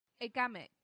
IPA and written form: əˈɡæmɪk (agamic)